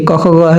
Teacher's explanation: ख का उच्चारण स्थान कहां है देखिए कख ग तो कंठ होगा